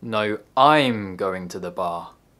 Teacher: i stressed the word i'm which is a function word in order to contrast and correct my deaf grandad no i'm going to the bar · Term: sentence stress